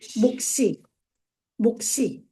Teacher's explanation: 시옷이 뒤로 연음이 될 때는 반드시 된소리로 연음이 돼요.